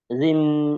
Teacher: জিহ্বার মাঝখান, মধ্যখান, তারপর আবার উপরে তালুর সঙ্গে লাগিয়ে